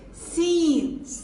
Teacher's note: No whistling sound. And when tip of the tongue touch the root of the lower front teeth with a little gapping, then Seen is pronounced